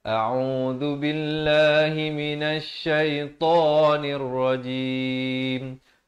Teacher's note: Yang pertama sekarang ni hamzah dipangkal kerongkong a. Yang kedua ain beri dhammah 2 harakat.